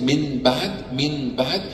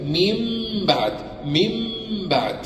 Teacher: hidden while preserving the ghunna, complete ghunna for two harakas, and without complete stress on the lips